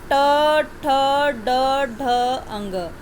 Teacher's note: असल में मूर्धा होता क्या है, मूर्धा जो है वो आप इसको कहेंगे कि जो हमारा दांत है ना, मुंह में ऊपर वाला जो दांत का हिस्सा है, मुंह के ऊपर में जो दांत है उसके पीछे साइड में, दांत के पीछे साइड में, वहाँ पर जो जीभ है वो उल्टी होकर क्या करती है, हमारे जिस जगह को स्पर्श करती है वो मूर्धा होती है। एक बार फिर मैं बता रही हूँ आपको कि जो हमारे मुंह के अंदर ऊपर वाला दांत होता है, दांत की जो लाइन होती है पूरी, उसको उसके पीछे वाले हिस्से को जीभ क्या करती है, उल्टी होकर टच करती है।